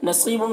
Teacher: नसीबुम, सौद को पुर पढ़ेंगे, या मद्दा है, एक अलिफ के बराबर खींचेंगे। बुन के तनवीन में इख्फा हो रहा, तनवीन की आवाज़ को नाक में छुपा कर पढ़ेंगे।